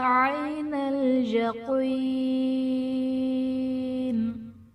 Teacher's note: حرف مدہ کے بعد عارضی سکون یعنی وقف کی وجہ سے ہم نون کو ساکن کر دیں گے تو یہاں پر بھی مد عارض کا قاعدہ ہوگا۔